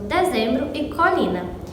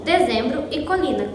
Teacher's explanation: é possível reconhecer um falante da região nordestina pela abertura sistemática da vogal pré-tônica em palavras como dezembro e colina, que em outras regiões são pronunciadas como dezembro e colina, com as vogais fechadas.